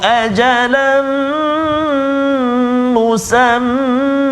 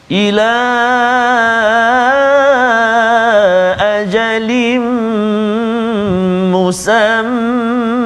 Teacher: kita baca dengan mat iwad dengan kadar dua harakat ketika waqaf, kan. Jadi kalau kita sambung, dia tak jadi mat iwad lah, dia akan jadi apa huruf yang kita jumpa selepas itu, sama ada ikhfa hakiki ke, idgham ma'al gunnah ke, izhar ke dan sebagainya, idgham bila gunnah ke.